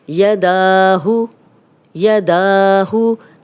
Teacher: دال پہ کھڑا زبر ہے، 2 حرکات لمبا کریں گے